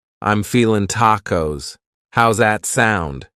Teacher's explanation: You might say, I'm feeling, cutting off that G.